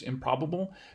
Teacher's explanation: the place of articulation of the P sort of moves backwards to affect the sound that happens or comes before it in the utterance, improbable. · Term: regressive assimilation